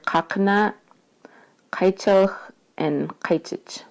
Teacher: the q is pronounced um in your throat so it kind of sounds more breathy